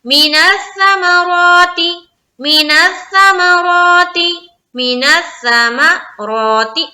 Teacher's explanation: را کو یہاں پر ہم کریں گے موٹا اور ایک الف کی مقدار کے باقدر کھینچیں گے